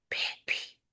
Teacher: آپ دیکھیں گے با جو ہے وہ پھا بن جائے گا، بیبی کو آپ پھیپی بولنا شروع کریں گے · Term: وسپر